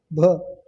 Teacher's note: भ है वह स्पर्श, घोष, महाप्राण और औष्ट व्यंजन ध्वनि है।